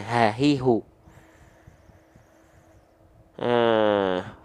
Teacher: makhraj huruf H besar itu dilafalkan bukan dari dada tapi dari aqsol halqi